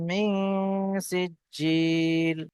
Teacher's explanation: নুন সাকিনের আওয়াজকে নাকের মধ্যে তুলে একালি পরিমাণ গুন্না করে পড়তে হবে। সিজিল, সিন জিম জের সিজ, জিম ইয়াজের জি, ইয়া সাকিনের পূর্বে জিমের নিচে জের এসছে, ইয়া মাদ্দা একালি পরিমাণ টান দিয়ে পড়তে হবে।